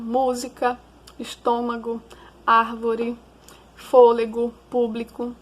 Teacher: proparoxítonas, que são aquelas em que a sílaba tônica é a antepenúltima